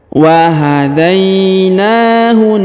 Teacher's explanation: Huruf da di ayun atau dibaca panjang boleh 2, boleh 4, boleh 6 harokat ya. Karena di depan huruf dal terdapat ya sukun sebelum huruf pemberhentian.